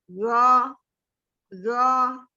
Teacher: Lidah pinggirnya udah nempel ke geraham. Za, za. Iya. Tapi ujung lidahnya tidak keluar ya.